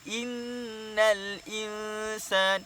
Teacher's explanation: hukum tajwidnya adalah wajibul gunnah, wajib dengung, yang kita panggil sebagai nun bersabdu. Dengung dua harakat.